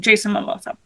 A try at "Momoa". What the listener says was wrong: Are we purposely pronouncing his name Mimosa as opposed to Momoa?